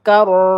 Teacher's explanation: ro bertasdid ditekan sama rya tebal ya. Kar mag jadi waqaf ta marbutah ya.